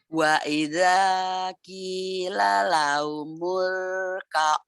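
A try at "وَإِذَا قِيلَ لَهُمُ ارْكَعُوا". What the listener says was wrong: Bukan humul ka'u. Wa idza qila lahumur ka'u la yarka'un.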